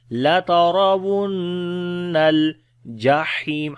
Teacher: لترا کسی حرف کو لمبا نہیں کریں گے، را کو موٹا پڑھیں گے، جو زبر ہے اس کے اوپر. نون کے اوپر غنہ کریں گے، شد آ گئی ہے